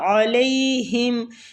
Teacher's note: عین جو ہے یہ وسط الحلق سے ادا ہوگا